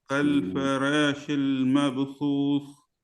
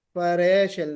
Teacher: कोशिश कीजिए कि रा मोटा हो